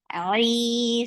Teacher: squeeze well for ain and make it 2 counts long. Ali na is short.